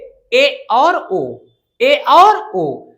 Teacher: इसके उच्चारण में संवृत से थोड़ा सा अधिक मुख खुलता है। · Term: अर्ध संवृत स्वर